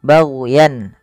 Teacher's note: hati-hati jangan sampai memantulkan huruf ghain, karena huruf ghain bukan huruf mantul